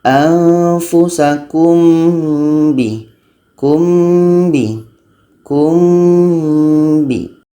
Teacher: mim dan ba ni adalah sama-sama huruf bibir jadi kita mudah untuk melepaskannya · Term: Ikhfa Syafawi